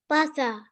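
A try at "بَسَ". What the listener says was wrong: Basa. Nice.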